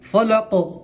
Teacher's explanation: فلقی، غف کریں گے تو پڑھیں گے فلق، اور قاف میں قلقلہ کریں گے، کیا کریں گے؟ قلقلہ، مطلب آواز لوٹ کے آئیں گی